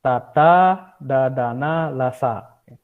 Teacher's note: aksara dantia, niki pertemuan lidah dengan gigi